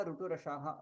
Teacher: ऋटुरसाः एतेषाम् उच्चारणस्थानं मूर्धन्य